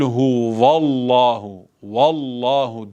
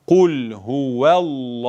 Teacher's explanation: vav harfi ince bir harftir Dolayısıyla ve diye okunur